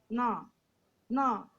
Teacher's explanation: दाधा ना का उच्चारण स्थान है दंत, और ना को नासिका भी चाहिए। ना ना ये नेजल है ना, अनुनासिक है।